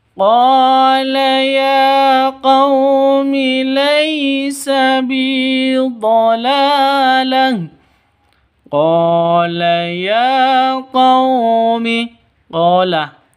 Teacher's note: qa panjang 2 ketukan karena ada alif diawali dengan fathah. Alif sebelumnya fathah, panjang 2 ketukan, mad asli atau mad tabi'i.